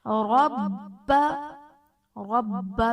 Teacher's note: رب میں را پر زبر ہے، را کو پر پڑھا جائے گا۔ با حرف قلقلہ مشدد ہے، تو یہاں پر ہم قلقلہ خوب جماؤ کے ساتھ کریں گے۔